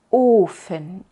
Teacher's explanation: la u de ufen la larga No simplemente es la misma como de ofen y más larga sino diferente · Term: la u larga